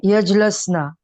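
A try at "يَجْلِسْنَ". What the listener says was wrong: Yajlisna. Ain Kalima has kasra. Ain Kalima has kasra. Yes, you just need to put Lam Kalima has kasra.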